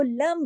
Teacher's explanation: इसलिए कि तनवीन के बाद अगला जो हर्फ है, अगर नून साकिन और तनवीन के बाद अगला हर्फ बा आ जाए तो कायदा इकलाब का लग जाता है, आवाज बदल जाती है, नून की आवाज मीम में बदल जाती है